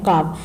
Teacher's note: زبان کی جڑ اور تالو کے نرم حصے سے ادا ہوتا ہے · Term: بڑا قاف